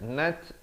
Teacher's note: Nat ada bunyi hamas ya, bunyi angin itu.